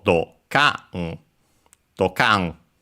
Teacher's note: In this case, technically accented on the ka. So dokan. Dokan, which is actually an onomatopoeia with a bang.